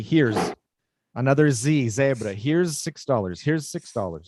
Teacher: the z goes straight into the s